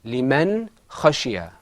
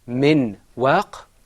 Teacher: Now, remember, when we said min waq, in the Qur'an we don't say min waq. The noon is not fully articulated. It is pronounced min waq.